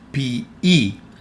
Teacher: the combination of omicron and iota makes the sound E, and also the combination of epsilon and iota makes the sound E.